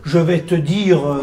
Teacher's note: Je vais te dire et tu rajoutes le E alors qu'il n'y est pas.